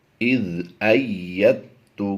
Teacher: یا کو سختی سے پڑھنا ہے اور دال کو سائلنٹ کرنا ہے۔ حالانکہ یہ خالی نہیں ہے، عمومی طور پر خالی حروف جو ہوتے ہیں انہیں سائلنٹ کیا جاتا ہے، لیکن یہاں پر ساکن حرف کے بعد مشدد حرف ہے۔